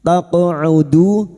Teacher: qaf sukun yang mati asli di tengah kalimat qalqala sugra, jangan lupa dipantulkan